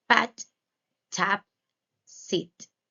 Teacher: these sounds are made without using the vocal cord so there's no vibration